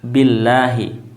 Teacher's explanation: karena lafaz asma Allah ini didahului dengan bunyi i ya kasrah ya Bi ya maka pengucapan lafaz jalalah yakni lafaz asma Allah adalah dengan membacanya tarqik ya tipis Billahi ya artinya adalah tidak tafhim tidak tebal ya bukan Allah